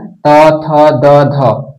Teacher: ये आपका आएगा दंत में, और न आपका आ जाएगा नासिका में। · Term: त वर्ग